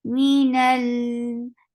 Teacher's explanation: Lam will get sifa of the wasut, and the wasut is a medium flow of sound. Minal, like I'm not blocking the sound of lam, but I'm allowing it to flow a little.